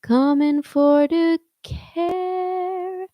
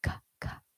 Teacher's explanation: It has a puff of air, but it does not have your vocal folds coming together to make a pitch on a c-c.